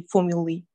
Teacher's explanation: Вот это вот AE в конце читается как и